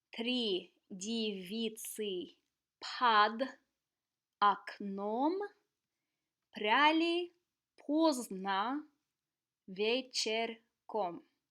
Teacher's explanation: So notice how only the emphasized o, the stressed o's, were actually pronounced as o. The other rule you're going to notice is that the Russian letter y is only pronounced y when it's stressed.